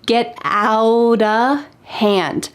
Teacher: In fact, the word of changes to just a.